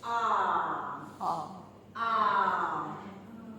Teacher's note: Try to make a vowel of the word palm, which we phonetically write as ah. Okay, you can see that the back of the tongue is raised. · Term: back vowel